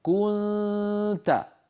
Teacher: ضع لسانك قريبا جدا منه، كن، فإذا انتهى صوت الغنة تاء، فتقرع المخرج بطرف لسانك، كنت، هكذا إخفاء النون عند التاء.